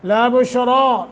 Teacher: रा के ऊपर खड़ी ज़बर है, इसको 1 अलिफ के बराबर लंबा करेंगे और रा को मोटा करेंगे